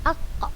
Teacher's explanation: pangkal lidah paling belakang nempel ke langit-langit paling belakang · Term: huruf qaf